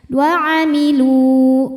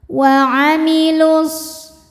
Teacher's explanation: maka lamnya panjang 2 harokat ya. Wa amilu kalau berhenti. Tapi jika diteruskan jadi wa'amilus, jadi pendek. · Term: mad tabi'i zahiri